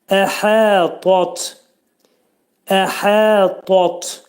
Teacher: Hə hərfi boğazın ortasından çıxarılır